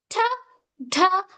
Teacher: these are called alveolar sounds as your tongue touches behind the teeth.